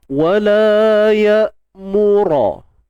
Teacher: Hamzah ni bersifat syiddah. Jadi syiddah ni kita perlu menahan suara.